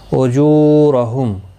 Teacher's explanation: جو واو مدہ ہے، ایک الف کی مقدار کے برابر کھینچ کر پڑھیں گے